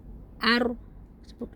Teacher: Nah, huruf ro ini kan memiliki sifat takrir. Jadi, tidak boleh ee ketarannya tuh lebih dari satu kali. Ar cukup segitu.